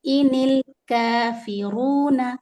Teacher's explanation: انل نون کسرہ لام سکون، لام پر بالکل ہلائیں گے نہیں، لام کو قلقلہ نہیں کریں گے